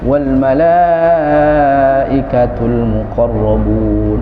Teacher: Malaikah dia kan panjang, madnya mad wajib mutasil, wajib panjang tuh.